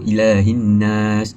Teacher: huruf lam tidak diperdengarkan diidramkan ke nun · Mad tabii iaitu pada perkataan ilahi. Ilahi patut dipanjangkan ah dua harakat. Ah kerana huruf lam berharakat fathah tegak. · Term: alif lam syamsiah